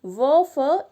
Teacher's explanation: इनका उच्चारण स्थान दांत और ओंठ से है, नीचे वाला ओंठ और ऊपर वाले दांतों से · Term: दंतोष्ठ्य